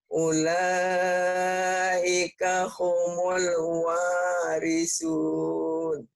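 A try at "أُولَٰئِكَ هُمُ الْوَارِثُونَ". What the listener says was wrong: Salahnya di mana? Huruf sa-nya ya, kurang raput dikit.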